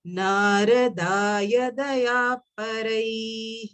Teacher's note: The alpa prana should only come. There is no acceptance of Mahaprana over here.